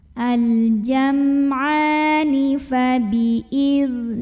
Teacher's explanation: Al-jam'a, a mad dhabi'i atau mad asli karena ada baris fathah tegak di atas huruf ain. Maka ainnya ini kita panjangkan sepanjang 2 harokat saja.